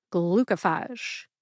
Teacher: when you say glucophage quickly, the middle syllable co sounds like ka. The O becomes a schwa O sound, like the O in bottom.